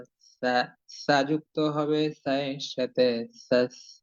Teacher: সা অক্ষরের উচ্চারণ হবে খুব নরম করে, নরম ভাবে। সা অক্ষর উচ্চারণ করার জন্য আমাদেরকে জিহ্বা বাহিরে বের করতে হবে। জিহ্বার আগা সামনের উপরের দুই দাঁতের আগার সঙ্গে যুক্ত করে ভিতর দিক থেকে বাহিরের দিকে ধীরে ধীরে আস্তে আস্তে বাতাস বের করে সুন্দর করে সা অক্ষরটির উচ্চারণ আমাদেরকে করতে হবে।